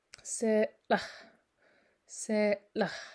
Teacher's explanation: Seems like this hard L, I believe it's called, is used to kind of, almost a little bit like a glottal stop, to separate a vowel from that L. Se, la, and then it ends up popping that L out a little harder.